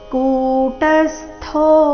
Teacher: ಇಲ್ಲಿ ಕು ದೀರ್ಘ ಟ ಮೇಲೆ ಆಘಾತ